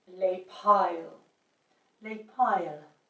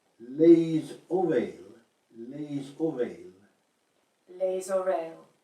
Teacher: the final S on les is not really pronounced, but if the plural word starts with a vowel, then the S has to be pronounced.